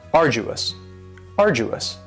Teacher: now you don't hear that D sound that much it's not very strong it almost sounds a little like a.j arduous arduous and something